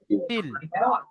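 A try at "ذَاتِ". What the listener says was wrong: সাকিনাল অক্ষরকে আপনি প্রথমে উচ্চারণ করছেন, এটা কিন্তু ভুল হবে।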